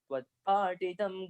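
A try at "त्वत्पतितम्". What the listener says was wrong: Tvatpatitam. Not ta, okay? Patitam. No ta. Titam. TH.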